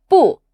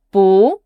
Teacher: 不 is normally with the falling tone, 不. But when the word after it also has a falling tone, like 是, we change 不 to the second tone, 不, to make it flow better.